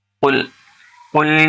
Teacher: دیکھیں قاف لام پیش قل بڑا قاف ہے، حلق سے نکالنا ہے